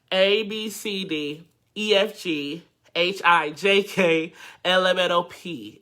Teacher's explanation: you hear my tone has changed a little bit because I clamped my nose